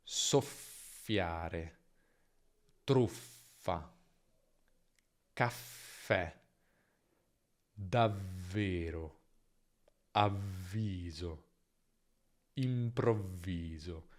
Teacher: Nella doppia la consonante è più lunga e la vocale che viene prima si accorcia, no?